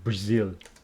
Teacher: with the stress on the second syllable Brazil